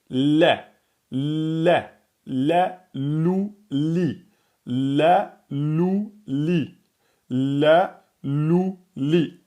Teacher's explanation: voyez le point de contact il est au-dessus des incisifs supérieurs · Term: la lettre l, lettre amincie